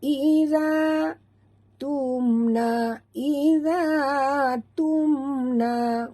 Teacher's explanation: mim mati bertemu nun, tak boleh dengung, izhar syafawi